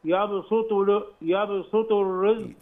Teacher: يا باسو سو، السين مرققه والطاء مفخمه